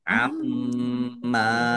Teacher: Amma mim tasdid dibaca apa? Dibaca mendengung. Dibaca ghunah ditahan biar tampak dengungannya. Amma mim fathah alif mad thobi'i panjang dua harakat.